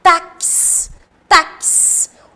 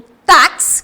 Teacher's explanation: Tem o som de um K. O X, ele reproduz 2 fonemas. O táxi, que é do K com o S.